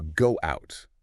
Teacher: with that little w glide linking them